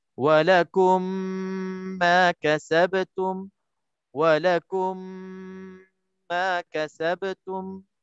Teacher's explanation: Terus kita masukkan dalam mim dan sertakan kita sabdu mim yang berbaris itu. Okey, cara bacaannya wajib diidghamkan dengan merapatkan 2 bibir mulut di samping dengung yang nyata dengan qadar 2 harakah. Sebut yang nyata di sini maknanya dia tak nak kita buat macam ikhfa, lambat-lambat masuk kan? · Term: idgham mithlain saghir